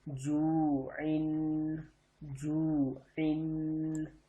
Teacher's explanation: عین 2 زیر ان، جو عین. عین کو حلق کے درمیان میں سے پڑھنا ہے